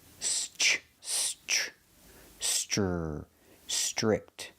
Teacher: The TR makes a ch chicken sound.